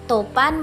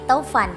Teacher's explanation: Yang kedua topan menjadi taufan, vokal O menjadi au. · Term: diftongisasi